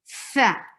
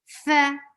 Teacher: When you put your edge of your upper two teeth to the inner part of your lower lip, and you place your teeth on the lower lip, and then you put a pressure of your breath, not the sound. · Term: hums